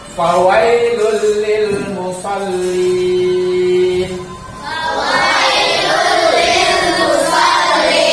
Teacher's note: Dommatain bertemu dengan lam, ini namanya idgham. Idgham apa? Idgham bila gunna. Jadi tanpa digunna.